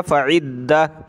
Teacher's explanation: وقف کرنے کا یہی طریقہ ہے. سانس ٹوٹا میرا یہاں تو اس کو گول تا کو میں نے ہا بنا دیا